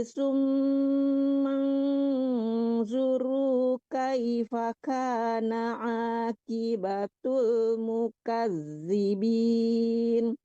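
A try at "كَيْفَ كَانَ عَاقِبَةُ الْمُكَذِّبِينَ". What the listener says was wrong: Qi, qafnya qaf tebal, jangan ki tapi qi ya.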